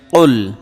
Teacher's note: কুল একটু চাপ দিয়ে কলকলার মতো ধাক্কা দিয়ে উচ্চারণ করতে হয় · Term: বড় কাফ